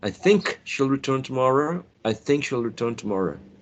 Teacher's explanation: Maybe it's an elision of the sound k.